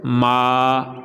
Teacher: ناک میں آواز نہیں جانی چاہیے، یعنی ماں نہیں کہنا بلکہ ما